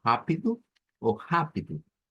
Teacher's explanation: en el acento de Brasil puede ser como ridu oidu con un sonido de u al final